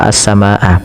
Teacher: panjangkan huruf ma sepanjang empat atau lima harakat dan tidak boleh dikurangi ya teman-teman karena di sini ada namanya mad wajib muttasil.